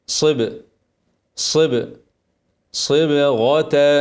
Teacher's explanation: صي صي باس ساكنه مرققه بعد الصاد المطبقه وبعدها غين مفخمه اقلقل الباء ماحركهاش مرققه صب صب صبغه ارقق الباء مقلقله افخم الغين اوعى ترقق الغين